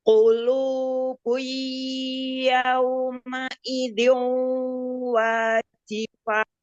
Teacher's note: Idgham gunah yang pertama sempurnakan juga. Masukkan ke hidung.